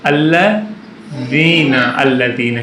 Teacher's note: تو ذال میں زبان کہاں لگے گی؟ دانتوں کی نوک سے